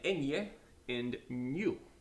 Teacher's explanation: this sounds like an N and a Y crammed in together.